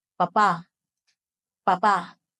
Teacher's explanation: you want to make sure you're holding that last syllable for an extra beat